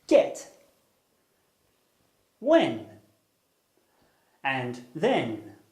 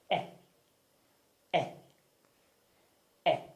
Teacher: not at the top of the mouth and at the front unrounded refers to your lips because they're stretched out as if you're smiling and not rounded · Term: closed meet front unrounded vowel